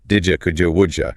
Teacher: So the core rule is that when a word ending in a dit sound is followed by u, the d and the y sounds merge to create a j sound.